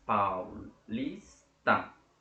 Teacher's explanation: Na palavra paulista, a sílaba tônica é o lis